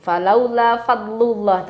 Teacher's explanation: fadlullahi itu jangan dipantulkan do sukunnya karena bukan huruf qalqalah